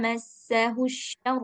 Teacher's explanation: Jadi yang pertama sin kemudian yang kedua syin yang dari tengah lidah